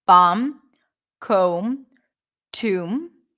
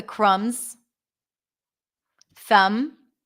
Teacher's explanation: So all those words that have the MB spelling pattern, we don't pronounce the B sound.